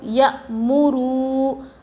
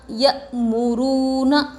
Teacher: حمزہ ساکنہ کے پڑھنے میں جھٹکا ہوتا ہے، میم کے اوپر پیش حرکت تھوڑا بھی نہ کھینچے، واو جس پر جزم اور اس سے پہلے پیش حروف مدہ تھوڑا کھینچ کر پڑھے، نون کے اوپر زبر حرکت تھوڑا بھی نہ کھینچے۔